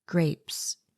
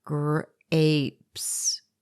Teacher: You hear the long A sound and the air pop of the P sound.